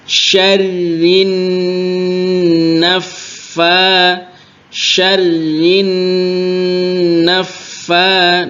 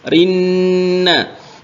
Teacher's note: Nun tasdid dan Fa tasdid jadi ditekan tiga-tiganya syarina syarin naffa Nun tasdid didengungkan yang lama